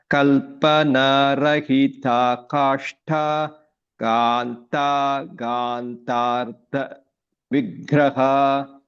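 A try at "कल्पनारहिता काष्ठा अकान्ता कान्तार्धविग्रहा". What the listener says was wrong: So chant the second word together. Because this is kashtha this is there's no split after this. This has to be, there is a sandhi happening here. So please chant this together.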